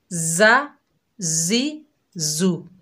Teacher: अगर हम इनके ऊपर इराब लगाएं जैसे जा ज़बर जा, जा ज़ेर जी, जा पेश जू, जा जी जू। देखिए तो इनमें सीटी आ रही है यानी सख्ती पैदा हो रही है